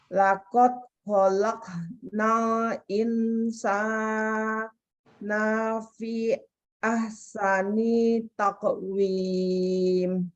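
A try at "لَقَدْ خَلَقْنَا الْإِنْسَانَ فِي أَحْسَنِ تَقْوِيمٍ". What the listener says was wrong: Bentar. Laqad khalaqnal. Ada 2 kol-kolanya. Insana fi-nya kurang sedikit lagi panjangnya.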